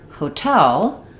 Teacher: in hotel, we're stressing on the tell syllable. So it functions just like the word tell.